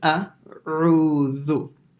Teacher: Qul means say. And then a has to be pronounced with a hamza, and then straight after it is an ayn